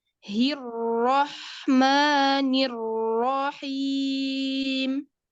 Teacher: Jadi tasydid, ro tasydid itu sudah tebal dari sukun pertama.